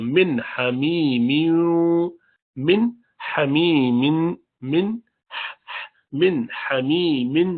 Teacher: اس کے بعد من نون ساکنہ آیا، نون ساکنہ کے بعد ہا ہے. ہا حروف حلق میں سے ہے، حروف حلق کے ساتھ اظہار کرتے ہیں. حمزہ ہا عین ہا غین خا جب آ جائے تو اظہار کرتے ہیں.